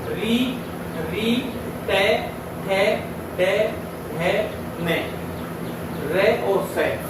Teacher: मूर्धन्य वर्णों की संज्ञा दी गई है, अर्थात ये हमारे मुख में स्थित मूर्धा से जो है उच्चारित किए जाते हैं